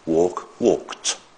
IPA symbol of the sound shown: t